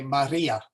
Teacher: we want to kind of do a a little roll in there · R is rolled a bit, similar to Spanish